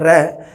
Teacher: ਕਾਂਬਵਾ ਮਤਲਬ ਹੁੰਦਾ ਕੰਬਣੀ, ਕਾਂਬਵਾ ਆਵਾਜ਼ ਮਤਲਬ ਜੀਭ ਵਿੱਚ ਕਾਂਬਾ ਪੈਦਾ ਹੁੰਦਾ, ਜੀਭ ਦੇ ਵਿੱਚ ਕੰਬਾਹਟ ਪੈਦਾ ਹੁੰਦੀ ਹੈ। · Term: ਕਾਂਬਵਾ ਵਿਅੰਜਨ